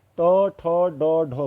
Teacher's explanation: टो, ठो, डो, ढो में जीभ मुड़ रही है ऊपर को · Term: मूर्धन्य